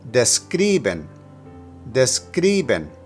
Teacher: For describen, put the emphasis on the second syllable.